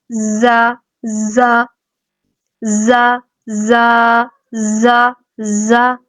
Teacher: زا میں سیٹی کی آواز آئے گی